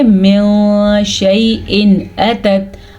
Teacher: نون ساکن کی آواز کو بھی چھپاتے ہیں اور نون تنوین کی آواز کو بھی چھپاتے ہیں